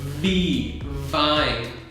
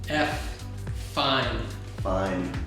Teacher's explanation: it is the same with your teeth and your lip. Okay. But one has the voice and one does not have the voice